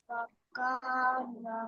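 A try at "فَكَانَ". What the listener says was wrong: হ্যাঁ, ফাকে আরো তাড়াতাড়ি ছাড়তে হবে, ফাকানা।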